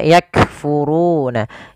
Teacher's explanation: kaf memiliki sifat yang namanya syiddah juga, adanya penahanan di dalam suaranya. Maka dia kita tahan dulu suaranya baru dialirkan nafasnya.